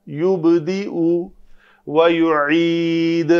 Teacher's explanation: عین کو وسط حلق سے نکالا تاکہ عین اور حمزہ میں فرق ہو۔ جو اردو میں ہم دونوں حروف کو ادا کرتے ہیں، ہمارا فرق واضح نہیں رہتا۔